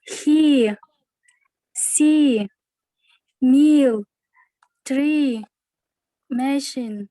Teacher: То есть мы продлеваем те буквы, да, то есть произнося звук И.